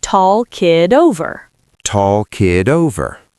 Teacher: Link it with a flap T, American style, id over. So together, tall kid over.